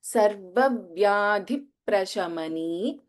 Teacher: ध is Mahaprana and then we have a Dvitvam also here.